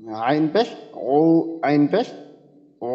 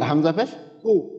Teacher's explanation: আর হামজার ক্ষেত্রে তো হামজা কোথাও কি আওয়াজটা আপনার চাপা হবে না, একবারে পুরোপুরি আওয়াজটা আসবে। আর আইনের ক্ষেত্রে আওয়াজটা কিছুটা চাপা, খেয়াল করেন।